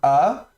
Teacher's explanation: le alèf c'est en fait un petit coup de glotte comme dans le mot homme. Vous voyez qu'on démarre en fait derrière la luette au niveau du palais et il y a un petit arrêt un petit une petite un petit silence avant la prononciation du du H muet aussi dans hom.